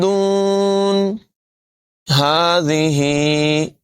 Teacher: ذال میں سیٹی کی آواز پیدا نہیں ہونے دیں گے، دونوں جگہوں پر کھڑی حرکت ہے، ہا کو لمبا کر کے پڑھیں گے.